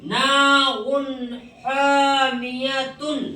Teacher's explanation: تو یہاں پر تنوین کی آواز کو کیا کریں گے؟ ظاہر کر کے پڑھیں گے، ناک میں نہیں چھپائیں گے، نہ ناک میں روکیں گے